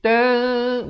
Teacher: Asalnya tan, jadi tan, bunyinya samar sekarang ni. Ikhfa berarti menyamarkan ataupun mensamarkan bunyinya itu, ataupun menyembunyikan bunyinya itu di antara nun dan kaf kadar 2 harakat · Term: ikhfa hakiki